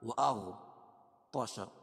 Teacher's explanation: طا کو موٹا کریں گے، حروف مستعلیہ میں سے ہے